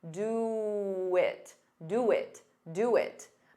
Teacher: to get rid of that pause you can add a very soft W